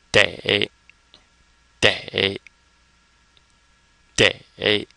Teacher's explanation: or the a in day as in today for that matter so it's kind of like saying day as in today and it's third tone